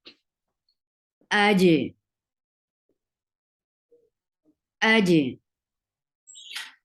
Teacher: jeen is a light letter and it is part of Qutubujatin. So you will apply Qalqalah, and it is part of a Shidda huruf too. · you are applying Shidda at first, but the final thing will be Qalqalah